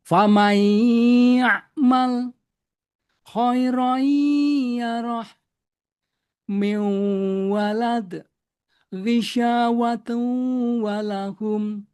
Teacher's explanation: Jadi gunahnya tidak dilafalkan dengan sempurna.